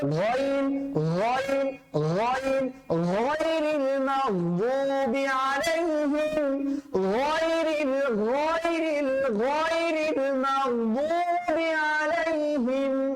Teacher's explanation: গইনটা উচ্চারিত হবে কণ্ঠনালীর কোন জায়গা থেকে? শেষ ভাগ থেকে